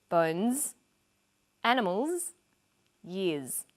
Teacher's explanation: the final s is pronounced z